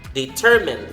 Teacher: So the stress is in the second syllable.